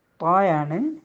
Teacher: ത്വാ നാവിൻ്റെ തുമ്പ് മേലെ മുൻപല്ലിൻ്റെ മുരടിൽ വെച്ചാണ് മുരടിൽ മുട്ടിച്ചാണ് നമ്മൾ ഉച്ചരിക്കുന്നത്. അപ്പം നാവിൻ്റെ തുമ്പ് ഈ പല്ല് മുളച്ച് വരുന്ന ഒരു ഊനുണ്ട് ഉൾഭാഗത്ത്, ഓക്കെ, അതിലാണ് നമ്മൾ നാവിനെ മുട്ടിക്കേണ്ടത്.